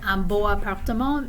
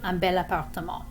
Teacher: the l sound at the end of belle kind of glides us into the word appartement